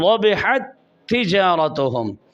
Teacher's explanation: एक ता दूसरी ता में दाखिल हो रही है और यहाँ लिखी हुई 2 ता हैं इस लफ्ज़ में, इस कलमा में, लेकिन पढ़ी एक जाती है, दोनों एक साथ मुशद्दद अदा हो रहे हो। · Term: इदगाम